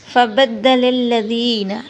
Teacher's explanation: ذال کو نرمی سے پڑھیں گے اور ساتھ تھوڑا سا لمبا کریں گے